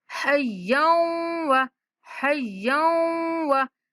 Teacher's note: یا کو مشدد واو کے ساتھ ملاتے ہوئے غنہ کے ساتھ ادا کریں گے